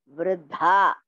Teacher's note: first Da is Alpaprana. Dha is Mahaprana.